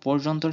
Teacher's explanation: অন্তঃস্থ জ এর সাথে রেফ যুক্ত থাকলে অন্তঃস্থ জ এর ঠিক আগের অধ্বনি ও এর মতো উচ্চারিত হয়। যেমন পর্যন্তর ক্ষেত্রে অন্তঃস্থ জয় রফলার আগের প এর সাথে যুক্ত অ এর উচ্চারণ ও এর মতো হয়।